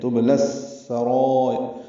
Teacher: سین باریک ہے، را پر ہے، اس کا الف مدہ بھی پر ہے، اس کی مد بھی پر ہے، لمبا کریں گے ہم اس کو، یہ مد متصل ہے، 4 حرکات سے زیادہ حمزہ یا کی شکل میں، اس کو را سے ملا دیں گے، وقفاً را باریک پڑھیں گے، یعنی ار کی جو را ہے یہ باریک ہوگی، تو السرائر یہ لفظ بنے گا۔